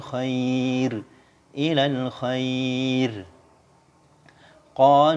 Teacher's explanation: semua huruf ro yang dibaca sukun karena waqaf yang sebelumnya ada huruf Ya Sukun Ya Sukun dibaca tipis